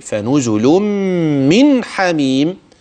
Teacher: النون بقى في من حميم هتبين كويس وتوضحها بلا غنه فيها واضحه